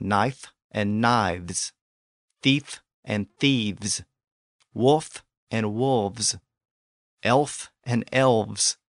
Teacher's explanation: English so when words like this became plural in Old English the unvoiced F in that environment became voiced since it was now surrounded by voiced sounds on each side